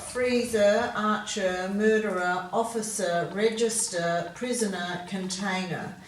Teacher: we're using the er on the end which is quite often pronounced as a schwa sound